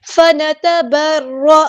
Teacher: یہاں پہ اخفا ہوگا، تن نہیں پڑھنا، اخفا کرتے ہوئے الف کے برابر رکنا ہے. فنتبرأ، فا میں ایئر فلو آئے گا، فا، یہ دیکھیں فنتبرأ، را یہاں پہ ہیوی لیٹر ہے، پورا ادا کریں گے موٹا، اور حمزہ کی آواز کو واضح ادا کرنا ہے.